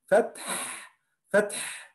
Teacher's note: When we stop in الحاء we must do همس.